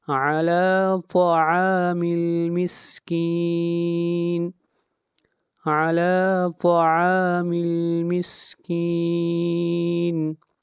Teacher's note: طا بھی حروف مستعلیہ میں سے ہے، اس کو موٹا پڑھیں گے